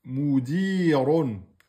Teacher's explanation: Ron, ra avec damma et donc emphatique.